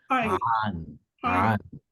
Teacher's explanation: যেখান থেকে আমরা আইন প্রনাউন্স করি ওই জায়গা থেকে আমরা প্রনাউন্সটা করব, মিডল অফ দ্য থ্রোট থেকে। মিডল অফ আইন আলিফ দুই জবর আন।